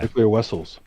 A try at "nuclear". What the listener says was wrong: There's no cl in there anywhere. It's nuclear, nuclear.